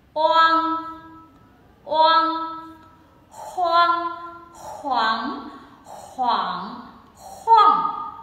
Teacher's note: cái âm của người Trung Quốc nó vang hơn và nó cao hơn, mình thấy các bạn sẽ đẩy gò má cao lên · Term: âm mũi